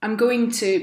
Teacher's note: she says, I'm going to, but in a really fast, like squashed down way, and it sounds more like I'ma